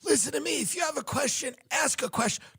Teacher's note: She had this weird, breathy voice where she'd be like, listen to me.